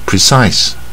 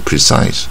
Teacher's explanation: 很精确的形容词，第二个重音在第二个音节▁precise